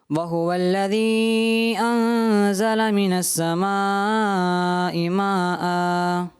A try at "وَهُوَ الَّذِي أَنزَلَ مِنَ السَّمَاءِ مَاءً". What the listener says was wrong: جی پہلی مد تو آپ نے کی اور دوسری مد چھوڑ دی، اور دونوں مد متصل ہیں، تو دونوں مد متصل ہیں، ان کو کرنا ضروری ہوتا ہے. ٹھیک ہے نا، تو آپ نے ایک چھوڑ دی، اس وجہ سے آپ کو جو ہے 10 میں سے 8 نمبر دیے جاتے ہیں.